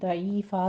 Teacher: آخر پر وقف ابدال کر لیں گے، ضعیفن ہے، ضعیفا کہہ دیں گے